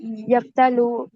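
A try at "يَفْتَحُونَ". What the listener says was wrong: نہیں نہیں، افتلو. افتلو نہیں، لام نہیں آئے گا. دیکھیں یہاں تھا فا عین لام، میں نے سامنے اس لیے رکھا تھا کہ آپ کو بھولے نا.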